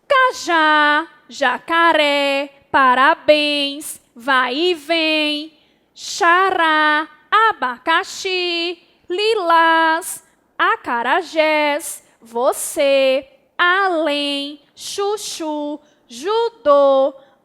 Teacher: a sílaba tônica dessas palavras a última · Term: oxítonas